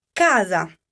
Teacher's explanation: so the accent in this case is on the second-to-last syllable